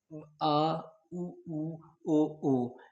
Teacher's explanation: पश्च स्वर में जीभ के जीभ जीभ के सबसे लास्ट वाले भाग से बोला जाता है उसे पश्च स्वर कहते हैं।